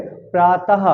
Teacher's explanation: इसका उच्चारण आधे हा के समान होता है और आ के साथ जोड़कर आहा की तरह लिखा जाता है। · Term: विसर्ग